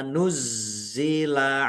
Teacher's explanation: zanya ada tasdidnya dibaca dobel ya ditekan dan ditahan